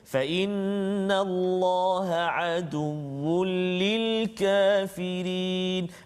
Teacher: Hukum dia idgham bila gunnah. Maksudnya masukkan bunyi tanwin tu ke dalam lam tanpa dengung.